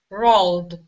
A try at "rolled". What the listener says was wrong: Nice. Excellent job.